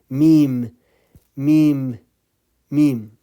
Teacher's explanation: you are using the lips and you are using the nasal at the same times so me lips both lips coming together but the uh the · So meme, lips, both lips coming together, but the sound is coming from your nasal